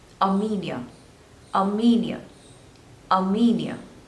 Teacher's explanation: there are three syllables and you have to stress on the second syllable